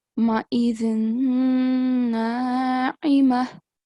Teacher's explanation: when you join with the next one, ma'izin na'ima, a little bit of nasal sound should be produced